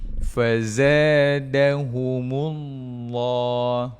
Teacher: Maka kalau baris atas sebelumnya, okey, kalau kalimah Allah sebelumnya baris atas ataupun depan, maka kita baca dengan tafkhim, tebal. Lam itu dibaca dengan tafkhim.